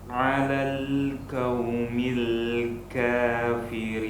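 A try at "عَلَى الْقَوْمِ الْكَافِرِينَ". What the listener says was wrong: Baik, kita ingat kembali bahwa ketika ada waw sukun sebelumnya huruf tebal, huruf tebalnya nih harus dihati-hati, jangan sampai berubah menjadi huruf tipis. Kau bukan, tapi ko, kau.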